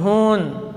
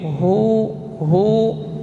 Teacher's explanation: hu tidak boleh cenderung ke hidung